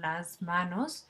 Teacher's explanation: esta s es Sonora porque la M es Sonora y la s nos está seguida de consonante Sonora por lo